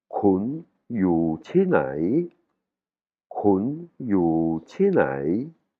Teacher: on entend bien le yu chi, hein, il tombe, et nai, il est cassé, il a une intonation cassée.